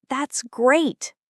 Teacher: When Americans say, That's great, with genuine excitement, the word great goes up in pitch and gets longer.